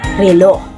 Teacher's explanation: ang paraan ng artikulasyon ng letrang ito ay pakatal at may tunog, at ang punto ng artikulasyon ng letrang ito ay panggilagid.